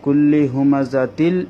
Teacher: তানবিনের পরে লাম এসেছে সেজন্য তানবিনটা লামের মধ্যে প্রবেশ করে যাবে গুন্না বিহীন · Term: বেলাগুন্না